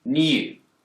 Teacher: In the word new, Brits will tend to pronounce a y sound here, new. But Americans don't. They've dropped the yod.